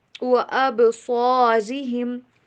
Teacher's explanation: اب با کے پر آواز کو ہلاتے ہیں جب اس کے اوپر جزم ہو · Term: کلکلا